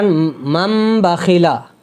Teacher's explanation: یہ نون ساکن ہے تو نون کی جگہ ہم میم ساکن پڑھیں گے ، یہاں چھوٹا سا میم بھی اسی لیے بنا ہوا ہوتا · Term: اقلاب